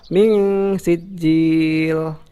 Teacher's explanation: Karena di sini adalah bacaan ikhfa ya. Bacaan ikhfa nun mati bertemu sin, harus dibaca samar-samar sambil mendengung ya